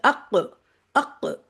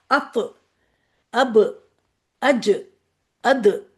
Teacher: जब ये हरूफ साकिन होते हैं तो आवाज को हिला दिया जाता है, आवाज हिलती है, जिसमें काफ और ता पे तो कलकला ज्यादा है, सबसे ज्यादा काफ पे होता है, अक, इस तरह की आवाज आती है, ठीक है।